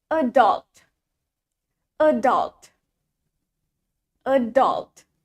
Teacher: The stress is in the second syllable. Jadi penekanannya ada di suku kata kedua, adult-nya, bukan e-nya.